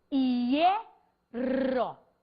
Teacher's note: se eu falo hierro, o acento prosódico está na vogal E.